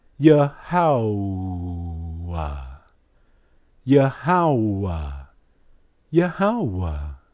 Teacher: you can't escape the oo sound. Even if you add an ah after the ha.